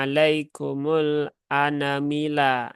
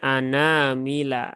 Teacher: Huruf nunnya dibaca panjang dua harokatnya. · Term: mad asli